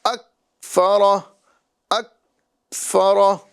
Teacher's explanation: اک کاف کی آواز کو جو ہے ہمیں لوٹانا نہیں ہے، اس میں قلقلہ نہیں کرنا